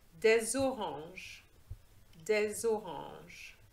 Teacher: Have you noticed I have made a liaison, which means that I have linked the des, the S of the des, with the O of the orange, okay? And this gives you a Z sound because orange starts with a vowel, so it's consonant plus vowel.